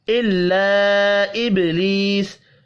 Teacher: إِلَّا إِبْلِيسَ چھوٹی مد ہے, یہاں بھی 3 الف کے برابر کھینچ کر پڑھیں گے. با ساکن پر قلقلہ کریں گے. یا مدہ کو ایک الف کے برابر کھینچ کر پڑھنا ہے.